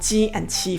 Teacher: Let's focus on ji and qi first. In both, the peak of the arch raises and touches the roof of my mouth, and then it quickly releases back to the arch position